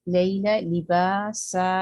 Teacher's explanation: जितना बा होगा उतना ही सा भी होना चाहिए और सीन के ऊपर विस्लिंग साउंड है। اور سین جو ہے وسلنگ لیٹر ہے، سین میں ایئر ہے تو آپ کی ایئر اچھی آنی چاہیے.